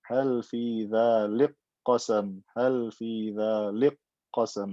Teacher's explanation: I've merged the kaf into the qaf. It becomes qaf with shadda. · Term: idgham kabir